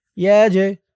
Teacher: জিমটা কলকলার হরফ ধাক্কা দিয়ে পড়তে হবে